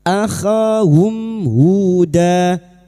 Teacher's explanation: sukun bertemu ha idhar syafawi mim sukun dibaca jelas tanpa mendengung bertemunya mim sukun dengan huruf hijaiyah selain mim dan ba maka bunyi mim sukun dibaca jelas tanpa mendengung